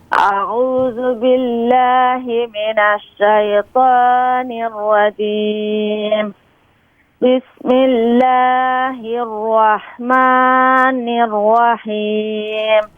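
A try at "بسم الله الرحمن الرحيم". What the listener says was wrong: یہ را میں آپ واو کی آواز آپ کی آ رہی ہے. بسم اللہ الرحمن الرحیم. آپ کوشش کیجئے کہ جب آپ را کو پر کر کے پڑھتے ہیں تو اس میں ہونٹوں کو گول نہ کیجئے.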